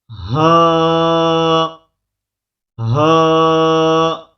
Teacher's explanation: یہ سینے سے ادا ہوتا ہے، اس کا تعلق سینے کے ساتھ ہے